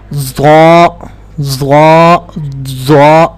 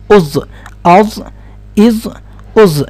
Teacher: اب پریکٹس کرتے ہوئے دیکھیے گا کہ آپ کی زبان ٹاپ کے جو دانت ہیں ان کی جڑوں کے ساتھ لگتی ہے